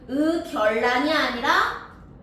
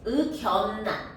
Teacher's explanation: 바뀌지 않고 니은 니은으로 발음해 주셔야 됩니다